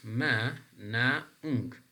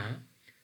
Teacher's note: the airway is blocked somewhere in our um oral cavity and the air is coming out through our nostrils then ma is a nasal sound